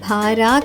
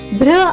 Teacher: బిఆర్ యొక్క శబ్దం భారా కాకుండా భ్ర అవుతుంది